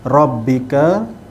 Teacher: huruf ra yang berbaris di atas, ra dibaca dengan tebal